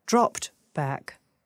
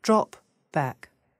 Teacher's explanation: the main difference is that the three consonant cluster is longer